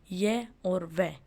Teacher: ध्वनियों के उच्चारण में हवा बिना किसी संघर्ष के बाहर निकल जाती है वे संघर्ष ीन ध्वनियां कहलाती हैं जैसे य और व इनके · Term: अर्ध स्वर